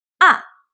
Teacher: The fourth tone, ah, it goes straight down like down